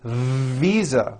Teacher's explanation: I said FISA with an unvoiced F. I should have said visa with a voiced V.